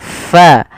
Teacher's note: ada angin yang dikeluarkan karena fa salah satu sifatnya sifat hames, yaitu mengalirnya nafas kita